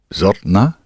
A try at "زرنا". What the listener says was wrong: That's it.